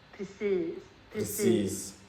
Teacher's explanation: challenging at first because the sound of this word is very nasal, especially in Stockholm